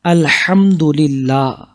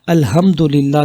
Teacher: قرآن پاک سورہ فاتحہ کی پہلی آیت ہے الحمدللہ، یعنی ہا گلے سے نکلے گا